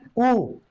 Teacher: ऊ कहोगे तो होठ हमारे गोल हो जाते हैं, जिसे व्रत कहा जाता है, होठों का गोलकार होना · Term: व्रतमुखी